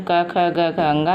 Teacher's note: क, ख, ग, घ का एक वर्ग बनाया गया है और इन वर्ग का नाम क वर्ग रखा गया है, जिसमें क, ख, ग, घ, अंग ये 5 व्यंजन हैं जो कंठ से उच्चरित होने के कारण इन्हें कंठ वर्ण भी कहते हैं।